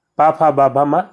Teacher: ओष्ठ तो जिसमें ओठों का प्रयोग होता है, तो पा वर्ग के जो व्यंजन होते हैं ओष्ठ होते हैं।